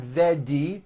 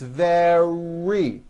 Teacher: sound the word is not veggie or vet knee it's very make sure that the r sound is strong and your lips are coming forward your tongue is back and you push out the are · the R occurs in the middle of the word it's not a D sound